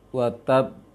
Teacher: Waqaf ada qalqalah yang bertasydid seperti ujung ayat pertama di surah Al-Masad. Wa tab, tahan dulu baru dipantulkan karena dia bertasydid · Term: qalqalah besar